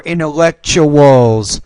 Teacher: so the TU is a CH, as I told you before